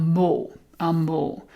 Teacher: So the B disappears and it's actually an M. But the B is just written there so that you can still see that the word is actually bow originally. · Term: eclipse